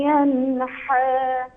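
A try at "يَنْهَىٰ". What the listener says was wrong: هی جیمی نیست. هی دو چشم است. ینها نشه. ینها.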